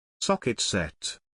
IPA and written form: ˈsɒk.ɪt ˌset (Socket Set)